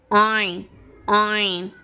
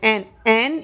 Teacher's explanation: दूसरा मखरज है हमारा हलक का आइन हा। आइन हा ये हलक के दरमियानी वाले हिस्से से अदा होता है, जिसे वस्ते हलक कहते हैं। आइन आइन ये हलक के दरमियान से अदा होना चाहिए।